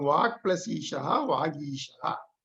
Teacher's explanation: The Ka becomes Ga, so it becomes Vagishaha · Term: Jashtva Sandhi